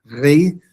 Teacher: rho, the R sound, is spoken sort of like a trill in classical, also in Koine Greek, so it's more re, as you would say that.